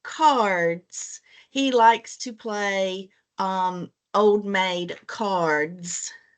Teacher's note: That one you should have put under the vowel R. Even though it had an A in it, the sound was that vowel R sound.